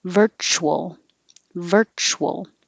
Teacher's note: you're going to have to start rounding your lips while you're making the ch